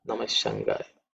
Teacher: It should be so, not so prominent, I would say, because it's a Visarga changing into the Sha sound